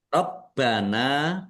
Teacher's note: Rabbana bnya ada tasdidnya dibaca dobel ditekan biar tampak dobel. Nun fathah alif mad thobi'i.